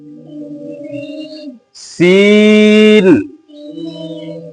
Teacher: इस सीन में सीटी की आवाज नहीं आती है, तो इसको भी खींच के पढ़ना है।